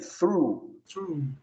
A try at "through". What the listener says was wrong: Through. Então, língua entre os dentes, não tem problema. Eu sei que é estranho, a gente não tem nenhum som em português assim. Nenhum. Mas é o TH.